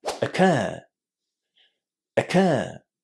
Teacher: For some reason, learners of English really like using this word, but there are two things you need to remember about it. First, you need to put the stress on the second syllable in this word. And the second syllable sounds very similar to the word care. · So just remember a long air and a very short first syllable.